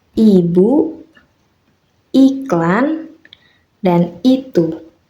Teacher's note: Dalam fonetik, vokal I disebut vokal depan tertutup karena posisi lidahnya tinggi dan berada di depan mulut, serta tidak dibulatkan.